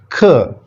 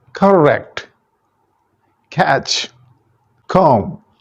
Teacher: This sound is produced when back of the tongue is placed between hard and soft palate. ये alveolar ridge के पीछे एक हमारे hard सी पट्टी है, फिर नरम है, उसके दरमियान बैक ऑफ द टंग जो लगाया जाता है, पर ये भी एक्सप्लोजन के साथ, यानी इसको छोड़ा जाता है, तो sound which is produced that is ख साउंड. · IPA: /k/